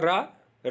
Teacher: रा को बोलते समय आपकी जीभ जो है वो थोड़ी पलट जाती है, तो उसको लुंठित या प्रकंपित भी बोलते हैं।